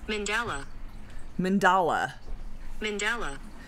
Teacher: the emphasis is on the second syllable